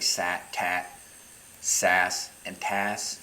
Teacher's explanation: you can extend the S basically forever, but you can't lengthen the T at all